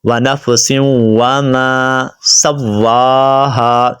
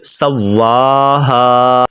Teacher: واو کو آپ نے لمبا کرنا ہے کیونکہ واو کے اوپر کھڑا زبر ہے